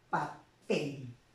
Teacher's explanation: la mayor fuerza de voz está en la última sílaba, pero como termina en consonante L, no lleva tilde, ¿ok? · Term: aguda u oxítona